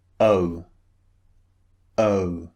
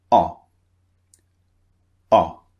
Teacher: One of them, the first one, is two vowels pushed together, as we've seen before. The second sound is very, very short and very brief.